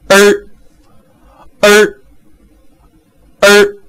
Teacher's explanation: 最后一个叫卷舌元音，儿儿儿